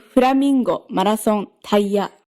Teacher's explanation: And this is a sort of default melody for Japanese words. The first syllable tends to be low, and the rest of them tend to be high.